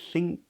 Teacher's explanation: Back of the tongue comes up for an NG. I know it's an N, but it's an actual NG sound.